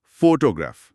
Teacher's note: जब हम इसे बोलते हैं तो जोर पहले हिस्से पर होता है।